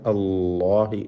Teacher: ഇലല്ലാഹ് എന്ന് പറയുമ്പോഴുള്ള ഇസ്മുൽ ജലാല അള്ളാഹ് എന്ന പദത്തിലെ ലാമിനെ തഫ്ഖീം ചെയ്യണം. അതിൻ്റെ ദീർഘാക്ഷരമായ അലിഫിനും തഫ്ഖീം ഉണ്ടാവണം. ഇലല്ലാഹി, അല്ലാഹി എന്ന് ലാമ് തർക്കീഖിന് പകരം അല്ലാഹി എന്ന് തഫ്ഖീം ചെയ്യുക എന്ന് മാത്രം.